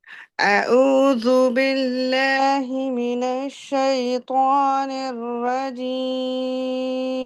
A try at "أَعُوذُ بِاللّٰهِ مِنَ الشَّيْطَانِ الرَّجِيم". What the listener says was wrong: मुकम्मल वाव की इजाफा कर रही है।